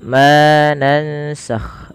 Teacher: Ma di sini dipanjangkan dua harakat karena ia kita hukumi dengan bacaan namanya mad th'i atau bisa dikenal juga dengan mad asli. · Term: mad thabi'i